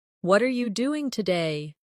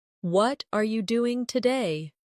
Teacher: For example, when someone says, "What are you doing today?" The stress usually falls on what and doing.